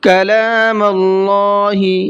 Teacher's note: اللہ کے لام کو منہ بھر کے پڑھنا ہے، اس لیے کہ اللہ کے لام سے پہلے میم کے اوپر زبر ہے، اور اللہ کے لام سے پہلے زبر یا پیش ہوتا ہے تو اللہ کے لام کو منہ بھر کے پڑھتے ہیں۔